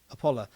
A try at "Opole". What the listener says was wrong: So the E is pronounced there.